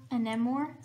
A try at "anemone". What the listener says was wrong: No, it's an N at the end. I'm sorry.